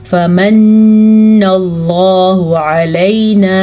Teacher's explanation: नून पे शद आई है तो इसका गुन्ना आपने ज़रूर अदा करना है